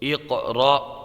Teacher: قلقلہ ہوگا کاف میں اور یہاں حمزہ ساکنہ کو جھٹکا دے کے پڑھیں گے